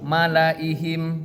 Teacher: la panjang dibaca pendek